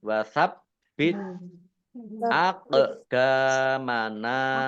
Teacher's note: Qaf sukun bacaan kolkolah, dibaca memantul, ditampakkan pantulannya · Wasab bit nya dibaca double, ada tasdidnya. Tak sukun ya t-nya keluar s sedikit